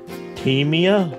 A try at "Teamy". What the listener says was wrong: Teamy. There's no A on it.